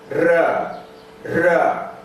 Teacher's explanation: Roll sounds are produced with intermittent air closure.